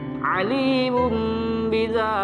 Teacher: Domah tain yang bertemu dengan huruf ba, maka tanwin di sini dibalikan menjadi huruf mim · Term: iklab